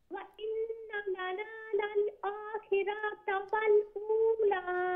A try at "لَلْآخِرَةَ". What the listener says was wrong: Okay, the word akhirata. You're stretching the ra a bit more than what you should. So the word pronunciation is lal akhirata, khirata, like that. Akhirata.